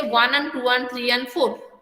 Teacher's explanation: actually the word is and. Okay, but and is not clearly pronounced. The D is silent. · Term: weak form